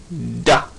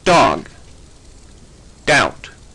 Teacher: A voiced alveolar consonant sounds like da